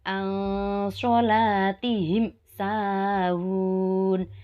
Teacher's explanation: Cara membacanya dengan jelas di bibir dan mulut tertutup tanpa dipanjangkan. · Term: idhar syafawi